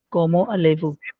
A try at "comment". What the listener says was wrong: this is written as comment. It's not como. How are you pronouncing it as como?